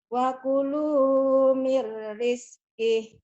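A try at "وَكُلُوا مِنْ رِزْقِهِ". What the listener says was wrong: Wa kulu mir rizki. Hampir ada tadi mirnya ya. Tapi nggak ada. Ada dikit. Wa kulu mir rizki. Coba lagi mirnya.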